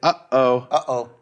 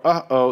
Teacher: So that feeling in your hand from your neck, from your throat, uh-oh, that's called a glottal stop. And that is the consonantal sound made by an aleph.